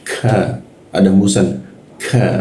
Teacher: Kalau di Arab K-nya lebih dalam lagi masuk · Cirinya dia ada sedikit desis. K, ada hembusan. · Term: huruf ki